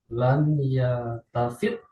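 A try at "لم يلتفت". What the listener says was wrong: Ada itu kan ada doma yul tafat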